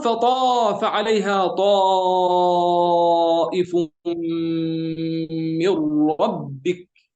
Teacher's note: فطاف حرف استعلاء تماما، وهذا الحرف شديد بلفظه يعني بمخرجه